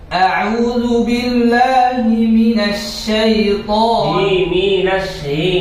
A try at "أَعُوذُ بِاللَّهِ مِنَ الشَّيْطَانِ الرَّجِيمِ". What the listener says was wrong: মিনাশ এমন ভাঙা ভাঙা হয়ে যায় আউযু বিল্লাহি আওয়াজটা একদম খুলে দেন ফেলে দেন বের করে দেন মিনাশ শাইতান